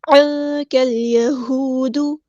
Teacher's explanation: لام یہاں پر لام قمریہ ہے، اس کو ہم ظاہر کریں گے · تو ساکن کی آواز کو یہاں پھر سے ہم چھپائیں گے، اخفا ہو رہا ہے، عین کو وسطی لیکن مڈل تھروٹ سے ادا کریں گے۔